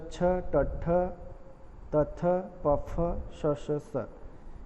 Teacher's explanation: जिन ध्वनियों के उच्चारण में स्वर यंत्रों में कंपन नहीं होता उन्हें अघोष कहते हैं।